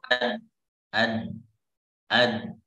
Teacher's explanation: makhraj dal itu adalah ujung lidah, ya ujung lidah kita, oke, bertemu dengan tempat tumbuh gigi seri atas